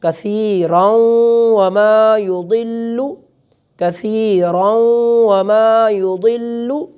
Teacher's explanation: کثیرن جو ہے اس کو ہم واو کے ساتھ ملا کر ادا کریں گے